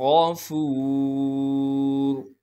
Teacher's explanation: غین کو موٹا کر کے پڑھنا ہے کیونکہ غین موٹے حروف میں سے ہے، فا کو صاف کر کے ادا کریں گے اور فا کو آگے واو مدہ سے ملائیں گے، واو مدہ ہونے کی وجہ سے فا کو ایک الف کے مقدار کھینچیں گے، را کو موٹا کر کے پڑھیں گے وقف کی حالت میں۔